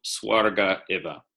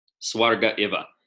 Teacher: That's called hiatus, vowel hiatus. You actually have a split-second pause in your enunciation.